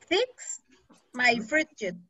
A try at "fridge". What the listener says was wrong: My fridge, only one syllable, fridge.